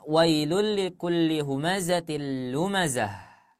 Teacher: Nah ya di akhir ayat itu ada yang namanya tak marbut jika kita waqf di Ta marbut Maka hurufnya dibaca menjadi ha